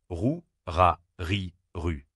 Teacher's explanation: Le R est un son gutural produit au fond de la gorge. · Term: R français